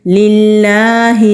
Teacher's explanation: لام جلالہ سے پہلے زیر ہے تو لام جلالہ کو باریک پڑھیں گے اور لام کے اوپر کھڑی زبر ہے ایک الف کے برابر